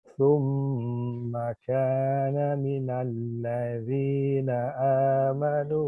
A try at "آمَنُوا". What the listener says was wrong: Amanu panjang amanu.